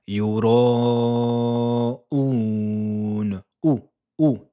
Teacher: Et ressortez bien les lèvres car c'est le son ou.